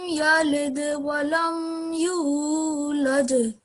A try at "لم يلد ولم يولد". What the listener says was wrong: Yeah, so it's not yulad, it should be just for 2 seconds. So it will be like أعوذ بالله من الشيطان الرجيم بسم الله الرحمن الرحيم لم يلد ولم يولد. So we don't pronounce that for more than 2 seconds.